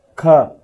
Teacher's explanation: ಖ ಅಂದ್ರೆ ಮಹಾಪ್ರಾಣ ಅಂದ್ರೆ ನಾವು ಜೋರಾಗಿ ಓದ್ತಾ ಇದ್ದೀವಿ ಅಗಲವಾಗಿ ಓದ್ತಾ ಇದ್ದೀವಿ